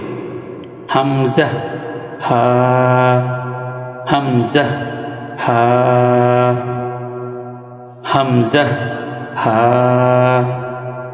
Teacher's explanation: তার মধ্য থেকে এক নাম্বার মাখরাজ হলকের শুরু হইতে। হলকের শুরু হইতে হামজা হা